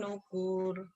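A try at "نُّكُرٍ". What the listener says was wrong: Pendek. Pendek. Nukur. Nukur. Pendek. Ayo pendek.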